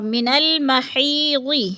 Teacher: یا مدہ کو 1 الف 2 حرکات کے برابر لمبا کر کے پڑھنا ہے